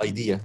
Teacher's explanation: the stress on the second vowel the stress is on the second foul well not the first